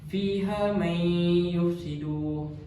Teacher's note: nun sukun bertemu dengan huruf ya. Kita masukkan bunyi nun ni di dalam huruf ya